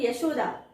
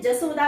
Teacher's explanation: य के स्थान पर ज का उपयोग होता है। अगर हम कहते हैं यशोदा तो वो यशोदा ना कहते हुए जसोदा कहते हैं।